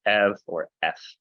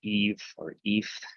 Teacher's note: that epsilon at the end turns into like a V or an F sound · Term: diphthongs